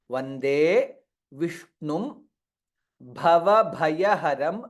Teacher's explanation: Bha Mahaprana in both the places, Bhava and Bhaya.